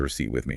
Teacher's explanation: There is indeed a P, and it is 100% entirely silent. You must pretend the P is invisible.